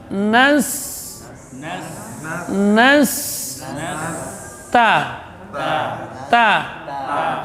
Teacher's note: Sin huruf shafir sughra, nas, nas, ta, syiddah dan hamas, ujung lidah di usul, di pangkal gigi seri atas